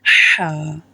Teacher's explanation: حلق کے درمیانی حصے سے ادا ہوتی ہے